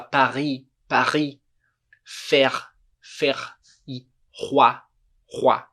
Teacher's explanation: R em francês é r com a garganta